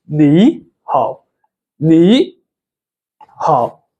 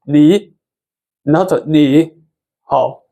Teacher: the first Chinese character will actually change to the second tone. So it's the rising tone.